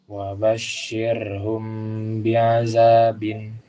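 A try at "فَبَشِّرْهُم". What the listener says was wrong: Sinnya coba diperbaiki. Fabashir. Roknya tipis ya. Coba lihat mulut Ustaz. Fabashir. Ke bawah. Fabashir. Bukan ke samping, bukan begini. Fabashir.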